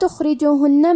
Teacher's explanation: حرف الخا کے ادائیگی حلق کے اوپر والے حصے سے ہے